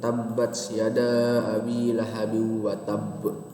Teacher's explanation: Qalqalah kubro adalah apabila waqaf pada huruf qalqalah bertasjid atau tidak. Dibilang gampangnya tuh qalqalahnya di akhir ayat. Itu qalqalah kubro. Jadi pantulnya lebih besar.